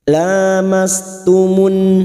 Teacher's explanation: fathah berdiri atau Alif di atas dua harakat kita panjangkan